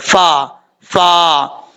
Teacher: فا کا مخرج ہے اوپر والے دانتوں کا کنارہ نیچے والے ہونٹ کی تری والی جگہ پہ لگے تو فا پڑھا جاتا ہے